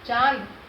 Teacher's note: इसके ऊपर और कोई मात्रा भी नहीं है, तो चंद्र बिंदु की मात्रा हमने कहाँ लिखी, जिस वर्ण के ऊपर कोई अन्य वर्ण नहीं है और अ की मात्रा और न की मात्रा नाक की ध्वनि से ज़्यादा उच्चारित हो रही है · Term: अनुनासिक